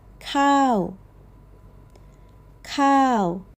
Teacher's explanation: Cow, a falling tone, and it's the heart of every Thai meal.